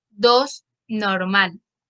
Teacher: la retención de la S se refiere a la producción de la sibilante S como alófono fiel del fonema S, es decir, que se pronuncia de manera fiel o estándar.